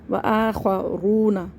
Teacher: واو مدہ کو کھینچ رہے ہیں، واو ساکن سے پہلے پیش ہے۔ و آخرون رونا نہیں پڑھنا ہے، و آخرون یقاتلون الف سے پہلے زبر ہے، الف مدہ ہے، اس کو ایک الف برابر کھینچ کے پڑھیں گے۔